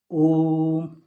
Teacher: प्लुप्त स्वर जिनके उच्चारण में दीर्घ स्वर से भी अधिक समय लेता है